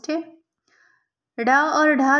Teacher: ड और ढ ध्वनियों के विषय में कौन सा कथन शुद्ध है यह मूर्धन्य उत्क्षिप्त ध्वनियां है